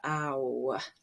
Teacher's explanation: It's a moving or changing vowel. Starts with ah and goes all the way to like a W, ow. And we can call it the brown vowel because it has, brown has ow in it.